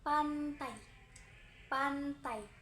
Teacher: kedua bibir dirapatkan penuh, pita suara tidak bergetar, lalu udara dilepaskan secara tiba-tiba